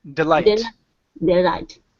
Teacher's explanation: The stress is on the end.